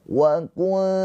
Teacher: nun sukunnya dibaca dengan samar. Ditahan dua harakat sambil bersiap-siap masuk ke makhraj huruf ta. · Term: ikhfa hakiki